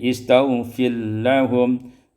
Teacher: idghamur ra fil lam, diidghamkan ra pada lam